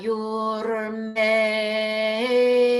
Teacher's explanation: chant at the middle note and then while you're in that syllable while you're still chanting it it slides up